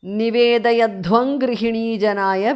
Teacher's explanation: because of sandhi anuswara changes to nga there